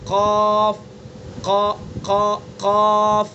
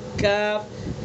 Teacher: زبان کی جڑ کو اس کے مقابل اوپر کے تالو پر لگائیں گے تو قاف، اور تھوڑا سا اوپر کو آ جائیں گے تو کاف قاف۔ زبان کی جڑ اس کے مقابل اوپر کا تالو قاف، زبان کی جڑ سے کچھ اوپر کا حصہ کاف